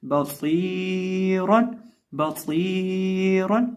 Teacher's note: अब यहाँ इस लफ्ज़ के अंदर हम सौद को एक अलिफ के बराबर खींचेंगे भी, इसको मोटा भी करेंगे, इसमें सीटी भी पैदा करेंगे और आखिर पे जो रा है उसको भी हम मोटा करके पढ़ेंगे